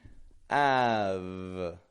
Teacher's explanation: I'm not bringing the corners of my lips in at all. I'm keeping the corners of my lips totally neutral and just the bottom lips moving up and touching my teeth.